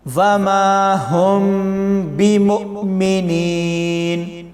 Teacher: وما میں الف سے پہلے زبر ہے تو ہم وما کو 2 سیکنڈ جتنا لمبا کر کے پڑھیں گے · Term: الف مدہ